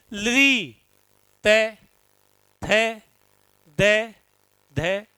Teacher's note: इनको बोलते समय आपकी जो जीभ है वो दांतों के टकराएगी जाकर।